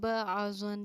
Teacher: اظہار الفاظ جو ہے ہمارا وہ ظاہر سے آیا ہے، تو اس کو ظاہر کر کے پڑھنا ہے، یعنی بالکل ٹھہراؤ نہیں کرنا ہے، سمپل نون کو ظاہر کر کے پڑھیں گے